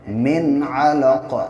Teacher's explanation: ناک میں آواز نہیں روکیں گے کیونکہ آگے عین ہے